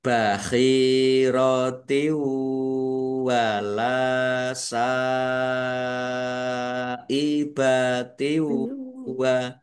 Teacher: Kasroh tanwin bertemu dengan huruf wawu, bacaan idgham bi gunnah masuk dengan mendengung yaitu mendengung wawu. Ditandai wawunya ada tasdidnya.